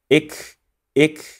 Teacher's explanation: in the case of kaf, you need to push your tongue slightly in front of the point of the articulation of the qaf. And it has to be dry.